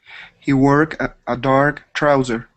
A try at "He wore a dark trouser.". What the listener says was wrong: Okay, see, here at the end of the word, you had added a K saying he work. Okay, we would end with an R sound. Wore.